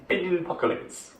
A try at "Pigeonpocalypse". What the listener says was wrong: Not lips. Apocalypse. Can you say apocalypse? Instead of apoc, put pigeon there. Pigeonpocalypse.